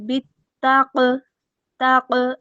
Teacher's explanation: قاف ساکن ہے، کون سی حروف میں سے ہے؟ یہ حروف قلقلہ میں سے، تو آواز کو لوٹائیں گے